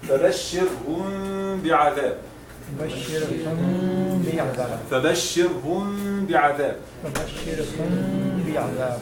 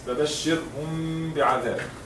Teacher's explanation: if the mim sakina is followed by a ba, the mim is pronounced in a way that the two lips do not come in complete contact. Ighunna with two beats is also done in this case. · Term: ikhfa shafawi